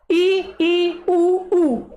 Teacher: Small इ उ देखो बिल्कुल थोड़ा मुंह खुलता है। इ उ इनमें आपका थोड़ा-थोड़ा मुंह खुलता है। तो संवृत वर्ड्स होते हैं।